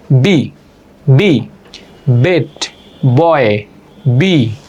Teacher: দুইটা লিপ এক করে শুধু একটা সাউন্ড বের হবে, বাতাস বের হবে না।